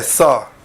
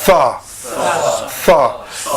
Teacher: The tip of the tongue touching the roots of the front two teeth.